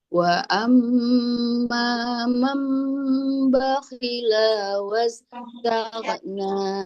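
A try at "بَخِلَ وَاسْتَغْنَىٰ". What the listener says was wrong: La-nya jangan dipanjang. Bakhila was.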